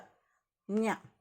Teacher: ನ್ಯ ಅಂದಾಗ ಮೂಗಿಂದ ಶಬ್ದ ಬರ್ತದೆ, ಆದ್ದರಿಂದ ಇದು ನ್ಯ ಅನುನಾಸಿಕ.